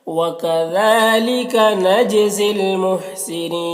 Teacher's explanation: وَكَذَلِكَ ذال میں کھڑا زبر ہے، ایک الف کے برابر کھینچیں گے۔ نج جیم میں قلقلہ ہوگا